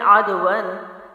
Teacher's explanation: عین جو ہے وہ حلق سے ہے، باریک آواز کے ساتھ ہے۔ دال حروف قلقلہ میں سے ہے، جزم تو ہے لیکن حروف قلقلہ ہے، یعنی حروف قلقلہ کو جب آپ پڑھتے ہیں تو اس کے مخرج میں یعنی دال کی جہاں سے ادائیگی ہے اس جگہ پہ باؤنسنگ کی جاتی ہے، حرکت پیدا کی جاتی ہے، جنبش کی جاتی ہے۔